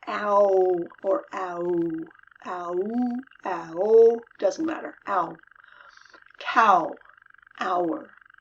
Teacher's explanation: Ow starts with an eh. Doesn't start with an ah. It starts with an eh. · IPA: /æo/